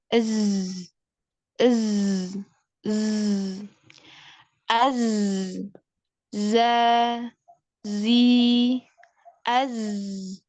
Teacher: Zai itu makhrajnya ada di ujung lidah yang hampir bertemu dengan gigi seri Bawah